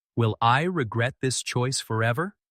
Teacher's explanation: Will I regret this choice forever? Emphasis, rise on regret, then let forever linger as a heavy question.